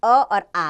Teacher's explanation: कंठ्य, यानी कि कंठ यानी गले से बोला जाता है अ और आ